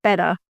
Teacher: So the T is more like the tongue taps at the top of the mouth and then comes back down.